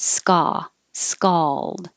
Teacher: this is the ah vowel so you need to open and keep your lips straight